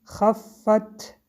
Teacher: حرف ت با سکون. در اینجا هم قاعده حمس، یعنی بعد از تلفظ حرف هوا را به بیرون سر میدهیم